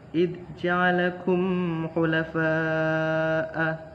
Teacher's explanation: Id ja'alakum khulafa'a, lalu ada mim mati bertemu dengan huruf kha, itu adalah idhar syafawi. Pada huruf fa bertemu dengan huruf hamzah, itu adalah mad wajib mutasil karena ada mad tabi'i bertemu dengan huruf hamzah pada satu kalimat